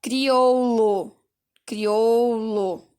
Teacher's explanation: quando você fala o ou do crioulo, ele acaba sendo fechado, então ele é um F, tá?